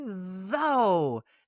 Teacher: Now the OUGH makes a long O sound, not an off sound.